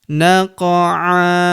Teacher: Huruf qaf berharokat sukun kita pantulkan atau kita qalqalahkan